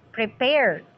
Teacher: so the second syllable is stressed